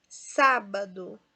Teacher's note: Sá é a sílaba mais forte, de trás para frente é a antepenúltima, portanto, ela é proparoxítona.